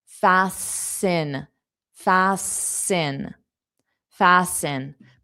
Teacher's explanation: To fasten, the T is silent.